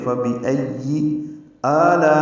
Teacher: میں آ میں مد بدل ہے، یہ 2 حرکات لمبا ہے، لا میں الف مدہ کے بعد حمزہ آنے کی وجہ سے مد متصل ہے، ہم اس کو 4 حرکات سے زیادہ لمبا کرتے ہیں